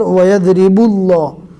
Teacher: با کو ڈائریکٹ لام سے ملا دیا، الف کو نہیں پڑھا اس لیے کہ الف کے اوپر کوئی بھی حرکت نہیں ہے۔